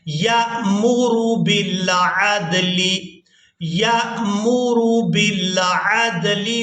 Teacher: अब यहाँ पर हमने या को हमजा साकिन के साथ मिलाना है, तो झटके के साथ अदा करना है।